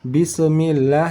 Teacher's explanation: Bismillah, tidak pakai bisa karena sin bukan termasuk dari huruf qalqalah. Langsung saja mengalir bismil dari desis angin sin langsung masuk ke huruf mim berbaris bawah. Bismi, tidak pakai se di sini. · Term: huruf sin